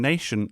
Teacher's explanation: the t ion nation is a sh sound